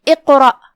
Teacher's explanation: یہاں راء کا حکم ہے تفخیم، تو ہم راء کو بھاری آواز میں پڑھیں گے. آخری میں الف ہے اور اس پہ جزم ہے، لہذا ہم حمزہ کو آخری میں ظاہر کریں گے.